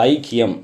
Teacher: இதுல இருக்கக்கூடிய ஐ வந்து ஒன்றரை மாத்திரை அளவு ஒலிக்கும் அரை மாத்திரை குறைஞ்சிரும் சரிங்களா ஐனு முழுமையா நம்ம உச்சரிப்பதில்லை ஐக்கியம் அப்படின்னு சொல்லிட்டு போயிடுறோம் சரிங்களா ஐ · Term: ஐகாரக் குறுக்கம்